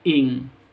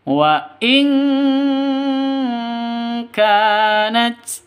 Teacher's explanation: Cara bacanya samar didengungkan, siap-siap ke huruf kafnya, non matinya ditambah dengan ng sehingga bacanya itu ing, seperti itu. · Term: ikhfa hakiki